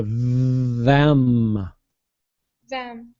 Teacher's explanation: I have one for you the th on the word them so you want to try to vibrate that th it's a voice th so you go them them there you go yeah your teeth